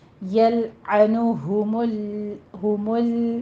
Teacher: ये लाम बारीक रहेगा, मीम भी बारीक, लाम भी।